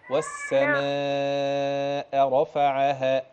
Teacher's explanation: أمد أربعة كده وعد على إيد أربعة